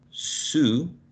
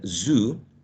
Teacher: You have two sounds that are very similar, but one of them is voiceless and the other one is voiced. And both of them are, in terms of place of articulation, are alveolar.